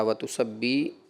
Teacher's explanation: ये कसरा मजहूल की तरफ चला गया